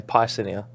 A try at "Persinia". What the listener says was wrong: I think we were putting too much emphasis on the PYR.